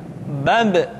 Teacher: ketika mati maka terdengar suara pantulan